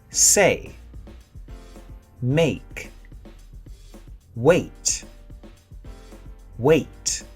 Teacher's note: here are four double vowels also called diphthongs our jaw closes when we say them so they get one beat let's try them from left to